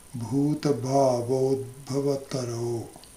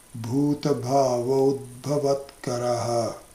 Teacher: because we are breaking the sandhi, the karo will become karaha. So the visarga will become distant.